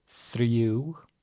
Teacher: pretty much all R's in Icelandic are rolled